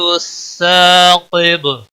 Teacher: قاف حروف مستعلیہ میں سے ہے، پر پڑا جائے گا، با وقف کی صورت میں ساکن ہوگا، اس پر قلقلہ بھی ہوگا